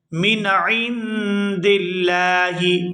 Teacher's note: یہاں لفظ اللہ کے لام کو باریک ادا کریں گے کیونکہ اس سے پہلے زیر ہے